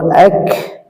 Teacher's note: হামজা কাফ জের সামান্য কি বাতাস বের হবে এর উপরে এবং কাফের উপরে সাকিন হলে সাকিন করার পর হালকা বাতাস বের হবে হামজা জবর হালকা বাতাস বের হবে হামজা হামজা তা হালকা বাতাস